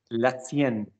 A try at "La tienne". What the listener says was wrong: Don't over articulate. Say it with the vowels, don't say it with the teeth. Look at me. La tienne. We do not need to do this. I might enunciate when I speak to help you because I am teaching. Copy my French, don't copy my English. Copy my French, don't copy my English.